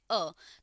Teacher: तो जो अ आता है वो हमारे पास अर्ध विवृत में आता है। मुख द्वार अ में सिर्फ आधा ही खुलता है।